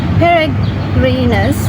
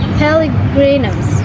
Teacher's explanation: One of the R sounds change into L to avoid repetition.